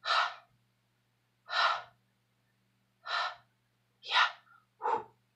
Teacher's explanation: Pour le Ha, pour la prononciation, vu que c'est un H aspiré, dans le sens que c'est comme comme le souffle